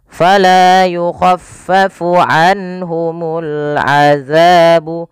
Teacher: Kemudian pada lafal anhumu di sini ada nun sukun bertemu dengan ha, yang dimana ia kita namakan dengan bacaan izhar halqi, dan dia harus dibaca dengan jelas suara nunnya ketika bertemu dengan huruf ha